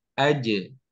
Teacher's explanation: sifatnya adalah jahar, sehingga tidak ada mengalirnya nafas atau udara, sehingga bukan aj, tapi aje